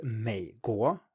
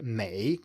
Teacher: Still in most other cases and that's a vast majority of cases the third tone is just a low tone. So the third tone is in front of any other tone except another third tone just a low tone. For example, USA in Chinese is may go.